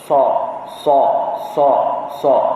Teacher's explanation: Ataupun berdesir ni hamas ini maksudnya bunyi desiran itu serta berangin. Bila menyebut huruf hamas, bila kita sebut so, ada angin keluar daripada rongga mulut kita kan.